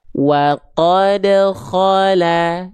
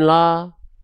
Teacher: Dia dibaca dengan vokal A, diringankan pelafalannya, dibuka mulutnya, vokalnya A, tipiskan pelafalannya.